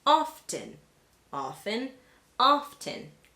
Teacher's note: And even though it is standard to hear often without the T, you might still hear people pronounce the T in often